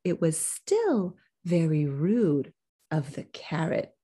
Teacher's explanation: we already mentioned carrot so it should be de-accented but you're stressing it